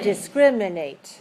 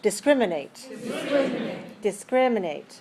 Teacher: four syllables where's the stress second